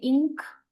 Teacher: The back of the tongue touches the soft pallet.